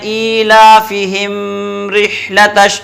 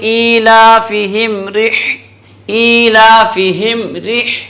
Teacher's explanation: میم پر ٹھہرنا نہیں ہے, فوراً اگلا حرف پکڑ لینا ہے. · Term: اظہار شفوی